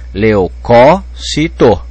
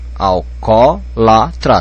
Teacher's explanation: Pode pôr acento, porque a tonicidade está caindo na terceira sílaba, de trás para frente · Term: proparoxítona